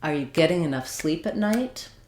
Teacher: getting has 2 syllables where the first syllable is the stressed one. The ing doesn't matter.